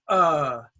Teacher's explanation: here we can say short u is schwa that's uh